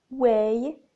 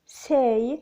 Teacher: the glide begins in the position for /e/ moving up and slightly back towards /ɪ/ lips are spread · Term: the diphthong /eɪ/